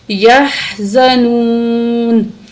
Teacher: زا کو سختی سے پڑھیں گے